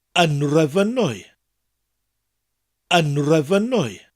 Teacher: When that word comes after un, the first letter, the T, changes to an NH, a N sound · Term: nasal mutation